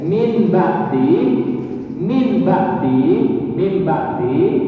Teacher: suara nun matinya ini karena berhadapan dengan ba langsung berganti mim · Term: ikrar